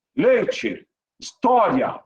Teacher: sai sempre pela boca, é ditongo oral.